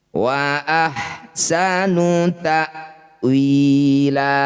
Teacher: Fathah tanwin dihentikan disebut bacaan namanya mad iwad. Bunyi fathah tanwin kita ganti jadi fathah panjang. · 2 harokat saja mad iwad, sama dengan mad tabi'i panjangnya.